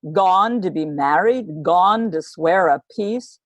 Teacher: She's furious about what's happened, and Shakespeare has given her this strong beat to start off the scene. This is called a trochee, stressed and then unstressed.